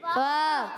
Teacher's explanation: پیارے بچوں اور مدنی چینل کے ناظرین، فعصوا میں پہلا حرف فا کی ادائیگی ہوتی ہے اوپر والے دانتوں کے کنارے، جب نیچے والے ہونٹ کے تر حصے سے لگتے ہیں تو ادا ہوتا ہے فا